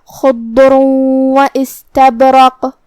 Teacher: بات بھی حروف التفخیم میں سے ہے لہذا ہم حرف الضاد کو بھاری آواز میں منہ پھلا کے ادا کریں گے جو کہ اس پہ جزم ہے لہذا ہمیں حرف الضاد کو ظاہر کرنا ہے. آخری میں را پہ تنوین پیش ہے پھر حرف الواو ہے تو یہاں حکم ہے ادغام بغنہ. ہم یہ حکم کو غنہ کے ساتھ ادا کریں گے.